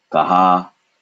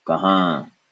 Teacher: in the nose, not with an N, in the nose vibrates, there's no N sound, no touching of the tongue